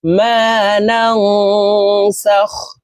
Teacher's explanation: নুন নুন জবর নাফা নুন সাকিনের পরে ইফার হারফ এই কারণে এই নুন সাকিনকে নাকের ভিতরে লুকাইয়া গুন্না সহিত পড়বো